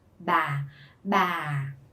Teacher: Remember to go down as a low falling tone.